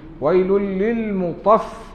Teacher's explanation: Nah, dia tanwin tu masuk. Lam bertemu lam, maka idgham lah.